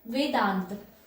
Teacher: अब इसके उदाहरण क्या है, वेदांत। जब आप वेदांत बोलते हो तो जब वेद और अंत, तो यहाँ पर आ सुनाई दे रहा है आपको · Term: आ का उच्चारण